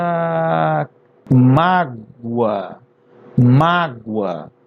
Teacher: mágoa e tem som de u então ele vai ser uma semivogal